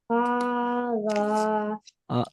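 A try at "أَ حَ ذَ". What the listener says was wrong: Don't stretch. Don't say kho the. Say quickly because we read in.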